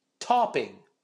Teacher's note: the word stresses on the first syllable here uh so I need to exaggerate the first ta sound